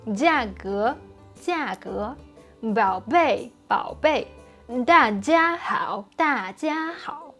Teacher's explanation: And like I already explained in this and this video, the Chinese G is a voiceless G, same as P and P. So just vibrate your vocal cords on the final vowels, not too early.